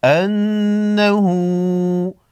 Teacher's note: ایک الف کے مقدار کھینچ کر پڑھیں گے، نون مشدد پر غنہ ہوگا